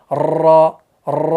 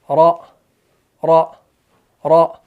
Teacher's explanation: जैसे रॉ रॉ, देखिए बार बार जुबान लग रही है ऊपर, आपने एक बार लगाना है, छोड़ना है। रॉ रॉ रॉ, एक बार लगाया तालु के साथ, छोड़ दिया। अगर बार बार लगाने बैठे तो तिकरार हो गया, ठीक है ना, तो रेपिटेशन हो जाएगी इसके अंदर।